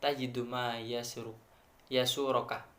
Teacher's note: Kemudian intonasi rendah pada kata tajid ma yasuroka yang menunjukkan bahwa kalimat sudah sempurna dalam susunan dan maknanya · Dalam kalimat ini tinggi berada pada inna ta'ti dan menunjukkan bahwa kalimat belum sempurna makna dan susunannya